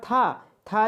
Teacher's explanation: था जो है आपका अघोष भी है और महाप्राण व्यंजन भी है